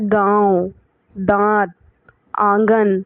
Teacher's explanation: इनका उच्चारण जो हो रहा है वो नाक और मुंह दोनों से हो रहा है, इसी वजह से इनको अनुनासिक कहते हैं।